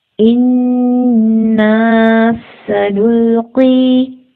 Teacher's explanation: سین کی سیٹی کو پرومیننٹ کریں گے